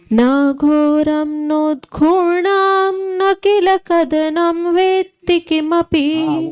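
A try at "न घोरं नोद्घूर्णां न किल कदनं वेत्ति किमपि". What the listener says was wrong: उद्धूर्णा नहीं, उद्घूर्णा है।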